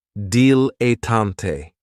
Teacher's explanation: this word has 3 syllables, and there's kind of like a stress on that first and last syllable